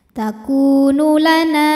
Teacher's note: sebab ada Alif didahului harakat fathah maka nunnya panjang dua harakat